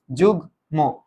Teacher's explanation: ভালো মতো খেয়াল করবা কিন্তু গয়ের সাথে ম উচ্চারিতই থাকে।